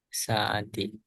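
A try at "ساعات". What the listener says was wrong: agak panjangan dikit.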